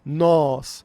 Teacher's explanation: Nós é um som aberto, é um O aberto.